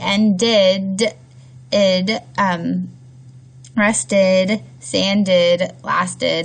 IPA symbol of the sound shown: id